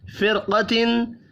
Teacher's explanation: فرقتن زیر ہونے کے باوجود را ساکن قاف کی وجہ سے پر پڑھا جا رہا ہے، حروف مستعلیہ ہے قاف بھی۔